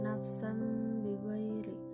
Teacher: Hukumnya iklab karena huruf sin berharokat fathah tanwin bertemu dengan huruf ba. Cara membacanya dengan tanwin berubah menjadi mim dan berdengung serta ditahan selama 3 harokat.